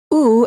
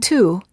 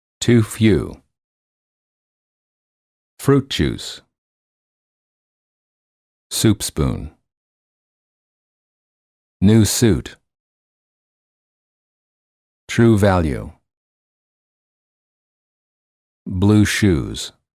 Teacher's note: for the ooh sound the lips are tense and rounded as if you're blowing a balloon and the tongue is slightly tense and raised High